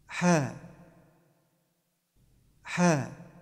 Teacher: The H sound is emitted from the middle part of the throat with some friction. Touch the back of the tongue to the back of the throat, and then force air out. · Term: heavy H